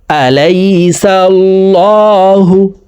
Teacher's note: এই লামকে ল বলে পড়তে হবে, কারণ আল্লাহ শব্দের আগের হরফে জবর অথবা পেশ হইলে এই লামকে ল অর্থাৎ মোটা করিয়া পড়িতে হয়। তো এখানে দেখুন আল্লাহ শব্দের আগের হরফে জবর আছে, এই কারণ এই লামকে ল বলে পড়ব, অর্থাৎ মোটা করে পড়ব।